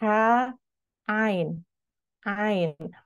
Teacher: huruf ain itu dari pangkal tenggorokan, bukan dari hidung keluarnya, ya. Jadi, kalau kita mengucapkan huruf ain, lalu hidung kita tutup, jika huruf ain itu tidak keluar, maka kita salah, kurang tepat dalam melafalkan huruf ain, makrosnya, masih dari hidung.